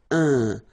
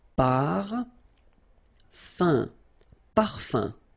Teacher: So remember, even if you've got this UM like that, phonetically it's exactly the same thing as if you would have UN. So it's nasal and it's un. So it really goes in your nose. You don't pronounce the M at all.